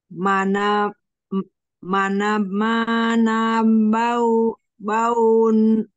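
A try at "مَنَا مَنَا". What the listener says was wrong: Bukan huruf ba ya, tapi ma. Mana-mana, mana-mana.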